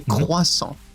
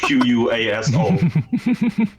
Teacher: So the English people really battle with the R sound. It comes from the back of the throat.